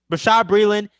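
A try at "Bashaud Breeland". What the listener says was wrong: It's not Brushard, it's Bushard. There's no R, it's Bushard.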